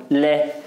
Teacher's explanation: पार्श्विक क्यों कहते हैं इसे, क्योंकि जो देखो आप लै का उच्चारण करो लै, तो जो वायु जो नहीं वायु वो जीभ के बगल से होकर निकल जाती है, लै बगल से होकर निकल जाती है, यानी कि ये जो बगल क्या होता है पार्श्व, यानी कि इसलिए इसे क्या कहते हैं लै पार्श्विक।